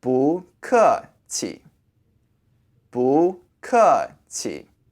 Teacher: normally you would say this word by itself with a falling intonation but in this phrase you can say with a neutral tone